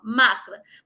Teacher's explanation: a sílaba tônica é a antepenúltima, ou seja, depois da tônica ainda tem duas sílabas átonas. Máscara, que é a tônica, aí tem duas átonas. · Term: proparoxítona